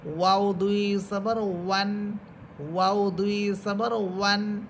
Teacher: মিম দুই সবর মান, এরপরে হরফ নুন নুন দুই সবর নান নুন দুই সবর নান, এরপর ওয়াও দুই ঠোঁট গোল করে পড়বেন। প্রথমে গোল করে শুরু করবেন, মাঝে দুই ঠোঁট ছড়াবে, এরপর আবার গোল করবেন।